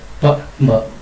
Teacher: ತುಟಿಯ ಸಹಾಯದಿಂದ ಹುಟ್ಟುವ ಅಕ್ಷರಗಳನ್ನ ನಾವು ಓಷ್ಠ ವರ್ಣ ಅಂತ ಹೇಳ್ತೇವೆ